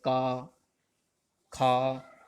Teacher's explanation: का वर्ग का उच्चारण करें तो कंठ से होता है